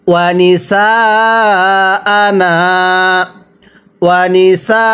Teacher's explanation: এই নুনের মধ্যে এক আলিফ টানতে হবে, সিনের মধ্যে 4 আলিফ।